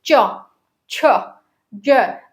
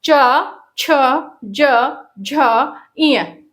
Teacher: ये जो ऊपर का जो तालु है उससे जीहवा टच होती है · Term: तालव्य